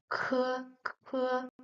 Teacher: It is a bit stronger, harder, and you will make some air flow out when you pronounce it. So it's not K, but it's K, K.